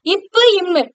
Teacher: இது ரெண்டும் உதடுகள் தொடுவதனால மேலுதடு கீழ இதடு பொருந்துவதுனால பிறக்கக்கூடியது.